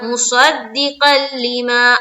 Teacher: یہ جو صاد ہے نا، اس کو منہ بھر کر بولیں گے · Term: موٹے حرف